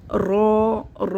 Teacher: رو میں تقریر ہوتی ہے، یعنی کہ تھوڑی سی کپ کپی ہوتی ہے زبان کے اندر ، تو یہ کیا ہوگا کہ ہماری زبان کے جو کنارے